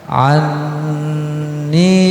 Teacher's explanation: ain lagi masuk ke dalam nun gunnah, ditahan ya, sekedar dua harokat, anni, kemudian ni sama ya, asli dua harokat, karena ada kasroh bertemu ya sukun ya.